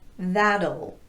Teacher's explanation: there's a schwa vowel inserted right before that dark l so that means the T will be tapped meaning that it will sound like a very light quick de-emphasized d · things going on there's a slight vowel before the L and the t is tapped so it's going to sound more like a light quick D sound